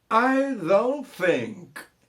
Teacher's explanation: I don't think, olha o T que morre, né? I don't think, esse T do think é falado mais ou menos assim, né?